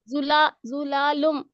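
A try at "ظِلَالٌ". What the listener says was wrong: जुलालुन. लुम नहीं, लाम दो पेश लुन है, और लाम को खींचना नहीं.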